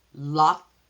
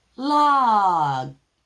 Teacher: Another voiceless voiced combination that we have is K and G at the end of words.